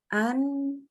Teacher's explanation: huruf nun juga dibantu dengan keluarnya dengungan dari rongga hidung